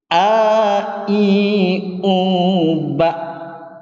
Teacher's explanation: Perhatikan prakteknya hamzah yang kuat menahan nafas dan suara.